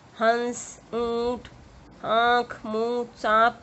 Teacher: इसमें स्वरों का उच्चारण नाक और मुंह दोनों में से किया जाता है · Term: अनुनासिक